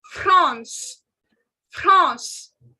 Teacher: So first thing, France, the country France, in French, the spelling remains the same, only the pronunciation goes France, France. This has a nasal sound. Please don't say France, it is France, France.